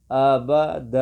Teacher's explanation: یہ دال کو کھینچیں گے مطلب 1 سیکنڈ کے برابر، جتنا 1 سیکنڈ میں وقت لگتا ہے اتنا اس کو ہم کھینچیں گے